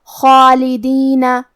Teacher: حرف الخا کی ادائیگی حلق کے اوپر والے حصے سے ہے اور خا حروف التفخیم میں سے ہے تو ہم یہ حرف کو موٹی آواز میں پڑھیں گے، اور کیونکہ اس پہ کھڑا زبر ہے تو یہاں مد الف ہے، اور مد الف اپنے پیچھے والے حرف کا حکم لیتا ہے تفخیم میں اور ترقیق میں، تو ہمیں خا کو اور مد الف کو دونوں کو بھاری آواز میں پڑھنا ہے.